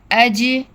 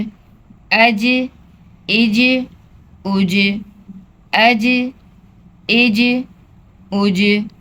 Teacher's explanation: حمزہ جیم زبر اج، جیم بھی حروف قلقلہ میں ہے، اس کی بھی آواز پلٹ کر واپس آئے گی